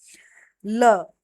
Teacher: ल होता है पाश्रविक जिसके उच्चारण में हवा जीभ के पासवी बगल से निकल जाए। यानी कि जिसके हम उच्चारण करते हैं ल का और पाश्रव मतलब साइड वाला भाग है जो वो हवा से ल निकल जाए बाहर बगल से ल। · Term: पार्श्विक